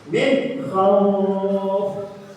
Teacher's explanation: Jadi jangan didengungkan tapi dijelaskan ya, jelas. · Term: idgham